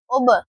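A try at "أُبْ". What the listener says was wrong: اون گول کریں اب نہیں اب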